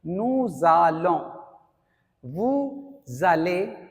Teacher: because nous is ending with consonant and allons is starting with vowel, so we have to do liaison, मिलाकर पढ़ते हैं.